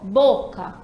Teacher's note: Pronunciei, chamei a palavra, a tônica é o bo, a bo. No caso, última, penúltima.